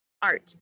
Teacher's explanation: You don't hear an ah sound or an a sound. You hear the R sound. That R controls the vowel. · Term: R-controlled vowel